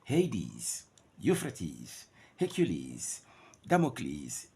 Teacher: all the words of Greek origin ending in es will produce the sound is